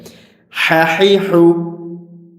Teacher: কণ্ঠনালীর মাঝখান থেকে চাপ দিয়ে হা হরফটা উচ্চারণ করতে হবে।